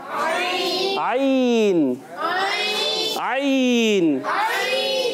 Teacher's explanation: मखरज दरमियान वाले हलक के दरमियान वाले हिस्से से और थोड़ा सा दबा कर, जी अपने गले को अपने प्रेशर से दबाना है, किसी और ने नहीं दबाना।